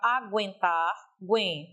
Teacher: Esse guen me leva a entender que é uma sílaba átona e não uma sílaba tônica